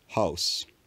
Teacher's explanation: house vowel is very backed